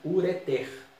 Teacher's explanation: A tônica é a última, ureter. Igual masseter.